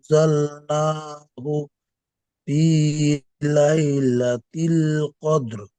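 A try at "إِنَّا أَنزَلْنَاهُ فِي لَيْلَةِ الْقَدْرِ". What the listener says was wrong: ভাই ইন নাটা ওখানে তো মাদ এসছে ভাই, 2 থেকে 3 আলি পরিমাণ টান।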